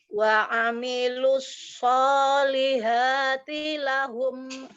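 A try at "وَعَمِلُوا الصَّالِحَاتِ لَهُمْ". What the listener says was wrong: Hanya masih ke bawah, masih agak ke bawah. Masih ke bawah. Haknya masih ke bawah itu. Ha yang dari tengah tenggorokan. Makhorijul huruf ha dari tengah tenggorokan. Lidahnya diem aja. Lidahnya diem aja, datar aja. Dia kan huruf tipis. Kalau lidahnya terangkat itu yang huruf tebal ya. Kalau huruf tipis semuanya lidahnya datar. Solihah.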